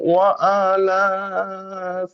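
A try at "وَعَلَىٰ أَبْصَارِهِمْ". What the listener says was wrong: আচ্ছা, এখানে আপনার আলাগুলো ওয়া আলা এমন হয়েছে। ওই যদি ওই আইনটা একটু টেনে বলি ওর সাথে, ওয়া আলা ওয়া আলা আবসারিহিম, ওয়া আলা আবসারিহিম, বলো দেখি।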